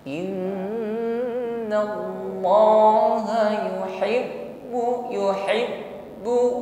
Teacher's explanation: Innallaha yuhibbu huruf ba yang ditasydid ditekan membacanya. Saat menekan pada huruf ba yang bertasydid maka sifat syiddah di sini nampak jelas. Maka inhibasu jarayan shaut, tertahan aliran suara ketika mengucapkannya karena makhrajnya tertutup dengan sempurna.